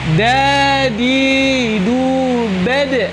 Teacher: Da adalah merupakan huruf qalqalah, maka ketika mati dia harus dipantulkan